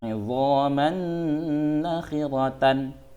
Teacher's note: Jadi, tanwin bertemu nun jadinya idgham bi gunnah. Oke, cara membacanya dengung.